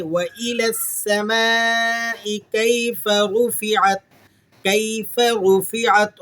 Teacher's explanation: رو کو موٹا کر کے ادا کریں گے